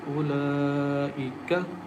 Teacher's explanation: This standing fatha, it is like alif madde asli, and we have madde asli and hamza in same word, so we stretch the sound and recite with stretching sound as ulaika.